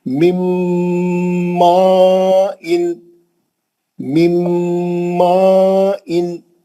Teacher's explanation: نون کو لے کے میم میں گھس جائیں گے تو نون غائب ہو جائے گا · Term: میم کا غنہ